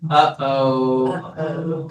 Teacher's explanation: a slightly thicker vocal fold closure